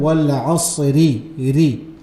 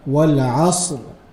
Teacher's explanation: If you're joining, ra is pronounced in a light manner. If you are stopping, ra is pronounced in a heavy manner. And the way you pronounce this ra when you stop on it is wal asr, a heavy manner, ra, wal asr.